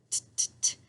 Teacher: It makes the T sound. It's right in the front behind my teeth.